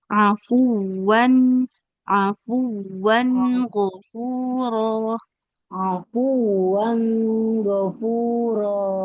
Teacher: Nah, huruf nun ini dia tawasud, jangan terlalu lama ditahannya. Jangan afuwan ghafuro.